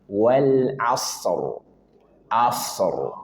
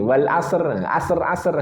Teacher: rnya tebalkan karena sebelumnya sukun sebelumnya fathah maka dia wajib dibaca tafkhim tebal wal asr asr rnya tebalkan jangan asr wal asr apalagi enggak dibaca rnya cuma wal asr wal asr.